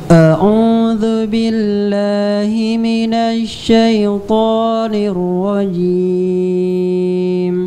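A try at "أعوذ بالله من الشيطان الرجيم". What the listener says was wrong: Baik, dzu-nya sempurnakan. Jangan a'udzu, tapi dzu, dzu. Jelaskan u-nya.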